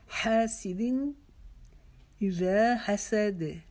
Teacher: हा की आवाज को हलक के दरमियान से निकालेंगे